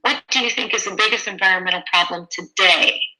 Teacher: Falling, because it's a WH question.